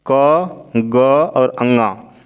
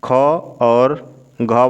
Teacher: क ग और अंगा ये अल्प प्राण होता है, बाकी ख और घ वाली लाइन महाप्राण होती है